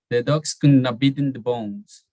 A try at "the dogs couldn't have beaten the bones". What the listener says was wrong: I think that you put in too much emphasis in beaten